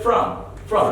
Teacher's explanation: We reduce it as a schwa sound, as a reduced sound.